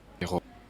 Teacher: Alors voilà, là j'ai fait un R français.